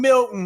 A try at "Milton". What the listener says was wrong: What'd you say, Milton? Not a T in sight. I know Milton, but there's a T in his name, Milton.